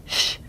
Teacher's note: it actually has lip rounding